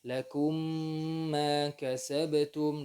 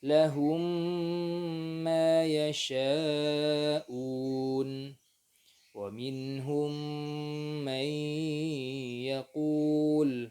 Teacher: Idgham saghir, idgham mimi. Lakum ma kasabtum dengan gunnah, dimasukkan hurufnya dengan gunnah